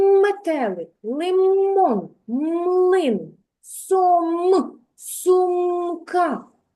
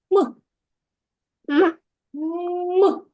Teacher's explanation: звук м вимовляється зі стиснутими губками